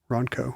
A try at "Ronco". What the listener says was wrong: Ronco. I think you have to hit the N a little bit harder. No, it's Ronco.